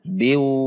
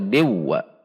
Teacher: Di depannya ada huruf waw. Maka tanwin ini masuk ke huruf waw dengan gunnah, 2 ketuk. Yaitu idgham bi gunnah.